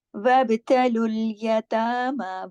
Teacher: वब बा पे कलकला हो रहा है